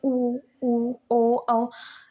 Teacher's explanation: आप खुद बोलकर देखिए, आपका जो होठों की जो आकृति है वो बिल्कुल व्रत के जैसे हो जाएगी। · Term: व्रतमुखी